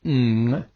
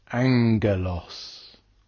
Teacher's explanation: I've covered this in another video, but that's where the gamma goes with another consonant, and where the pair go together, the first gamma is pronounced with a N sound, an N sound. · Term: gamma nasal